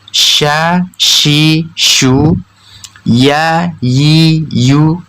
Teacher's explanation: Tengah lidah dan langit-langit di atasnya tidak menempel atau dengan kata lain agak sedikit mengarah ke langit-langit di atasnya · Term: huruf syin dan ya